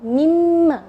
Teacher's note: Contoh misalnya mimma, kalau asalnya mimma ya, mimma, ketika digabung mimma, jadi nunnya tidak kelihatan. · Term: idgham